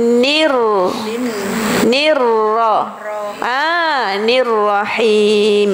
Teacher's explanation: nirrahim bergetar di hujung lidah